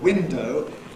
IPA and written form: ˈwɪndəʊ (window)